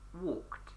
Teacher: Okay, we've added the ed suffix, and on this word, the walked, it makes a t sound on the ed.